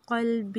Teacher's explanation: قاف کو پر پڑھیں گے